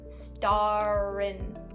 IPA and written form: stɑː-rɪn (star in)